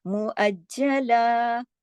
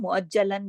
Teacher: لیکن 2 زبر کی تنوین پر جب رکتے ہیں، جب عارضی سکون کرتے ہیں تو ایک الف اور ایک زبر کی طرح پڑھا جاتا ہے. مؤجلا، جیسے الف پڑھا جاتا ہے نا ایک زبر کے ساتھ، اتنا پڑھا جائے گا.